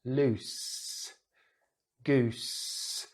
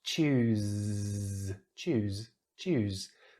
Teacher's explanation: The mouth position, the tongue is exactly the same for the S or the Z. The only difference is vibration, what we call voiced sounds. So the Z here, we use our voice box to create some vibration to make the Z sound, the Z sound.